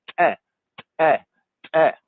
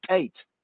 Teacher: So the tate, in order to say the tate, the tongue goes behind the teeth and there's a kind of explosive sound